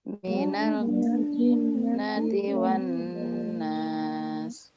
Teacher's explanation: Semua nun tasdid itu ada agak lama ya, nahan.